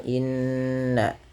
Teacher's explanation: tahan pada lafal bunyi nun yang berharakat tasydid karena ia bacaan gunnah